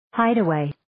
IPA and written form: 'haɪdə,weɪ (Hideaway)